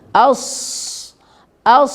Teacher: nafas keluar ini disebut dengan sifat hams ya jadi nafas mengalir keluar as as keluar nafas jangan ditahan jangan di telan ke dalam